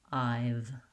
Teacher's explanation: you want to keep your voice on lengthen the vowel before the v and that will help you get that voicing i've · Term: voiced v sound